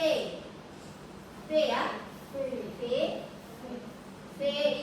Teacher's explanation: gigi menyentuh dengan bibir bibir bawah sehingga dia menghasilkan bunyi V